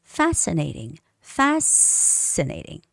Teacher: no c sound but s c put together is pronounced s